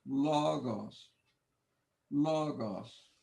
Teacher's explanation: I put the accent over the first syllable long o